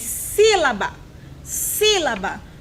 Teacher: O acento está no si. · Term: proparoxítona